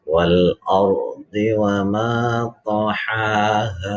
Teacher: Ada ro mati tapi di depannya, di sebelumnya ada hamzah berharokat fathah. Ini yang disebut dengan ro tafkhim.